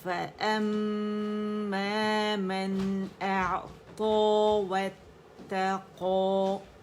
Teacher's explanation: عین کا توسط شو کریں گے کیونکہ وسط الحلق تک اس کی آواز جاتی ہے جب ہم اسے پڑھتے ہیں، ٹھیک ہے، توسط ہے اس کے اندر.